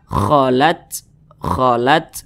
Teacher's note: cara membunyikannya itu ada desisan angin yang keluar daripada mulut kita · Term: sifat hams